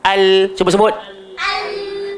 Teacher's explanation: kalau hujung lidah kita ni dia bertemu dengan betul-betul dekat langit paling depan belakang gigi akan keluar huruf lam